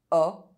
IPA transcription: ɔ